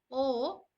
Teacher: कंठ और ओष्ठ उच्चारण स्थान के आधार पर जो कि दीर्घ स्वर है अर्ध संवृत इसे कहा जाता है